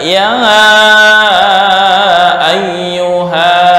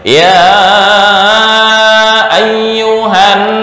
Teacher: dalam penulisan dan waqaf dibaca panjang, tetapi ketika wasol alif tersebut dihilangkan, artinya dibaca pendek